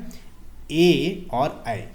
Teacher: ए और ऐ ये वर्ण कंठ और तालू की सहायता से बोले जाते हैं इसीलिए इन्हें कं तालव्य ध्वनि कहा जाता है ठीक है नेक्स्ट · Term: कंठ तालव्य ध्वनि